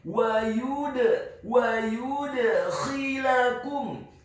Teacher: Huruf ya-nya dibaca tipis, tarqiq, dhammah 1 harokat. Huruf dal-nya dibaca sukun, tipis dan wajib untuk diqalqalakan atau dipantulkan.